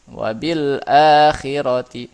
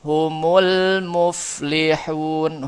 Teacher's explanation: Namanya izhar qamari. Ya, lam sukunnya dibaca izhar, jelas.